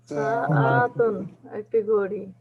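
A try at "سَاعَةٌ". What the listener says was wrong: না না না, সাআতুন একটি ঘড়ি। না না না না, এই সিনের পরে একটা আলিফ আছে, এই জন্য এখানে টান হবে, আইনের পরে টান নেই। সাআতুন একটি ঘড়ি। সাআতুন একটি ঘড়ি।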